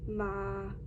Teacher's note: Midtone, which is just, for an example, like ma. It's just flat, no intonation.